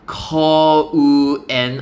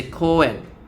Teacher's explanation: they throw away the U and then the U gets kind of like absorbed into the O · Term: stretching of the sound